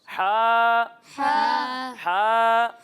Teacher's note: جب ہم ہا کی ادائیگی کریں گے تو اسے حلق کے درمیان والے حصے سے پڑھیں گے